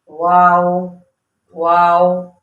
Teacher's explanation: तीसरा लेटर वाव, होंठों की गोलाई से अदा होता है, यानी ना तमाम गोलाई। ये देखें ना तमाम कैसे, यानी थोड़े से होंठ गोल कर लेंगे हम, वाओ वाओ, ठीक है, ये इसका क्या है, हर्फ की अदायगी का तरीका, वाओ।